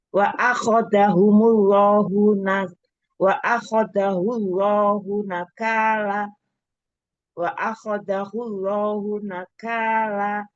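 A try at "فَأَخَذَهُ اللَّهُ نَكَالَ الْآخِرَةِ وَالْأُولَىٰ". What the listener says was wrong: Fa, pakai fa. Fa'akho. Fa'akhoza. Akhirati.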